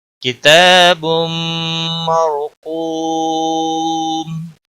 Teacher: تنوین کے بعد حروف یرملون کا میم آیا ہے، ادغام باغنہ ہوگا۔ مر را ساکن سے پہلے زبر ہے، اس لیے را کو پور پڑھیں گے۔